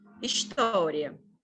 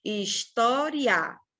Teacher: Aqui, o I é a nossa semivogal e o A é que é a nossa vogal. História. O A sobe a montanha. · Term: ditongo crescente